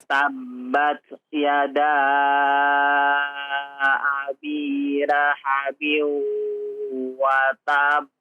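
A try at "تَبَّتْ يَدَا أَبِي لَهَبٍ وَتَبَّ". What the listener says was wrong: Ya, perhatikan laha ya, bukan hak kecil ya. Abi laha. Abi lahabin wa ya. Haknya besar. Yang kedua watab ya. Watab jangan terlalu lama juga ya. Untuk ditahan qalqalahnya jangan terlalu lama ya. Tapi watab sejenak saja ya, enggak usah terlalu lama.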